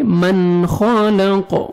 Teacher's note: نون ساکن کے بعد حروف حلقی میں سے خار ہے, یہاں پہ آپ نے اظہار کرنا ہے, جلدی پڑھیں گے.